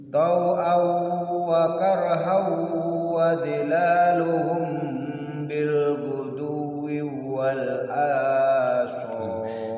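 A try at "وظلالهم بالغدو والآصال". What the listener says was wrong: Jadi wawunya itu jangan sampai nyerempet ke wawu yang kedua. Jadi usahakan bil wuduwi wal asal, bil wuduwi wal asal.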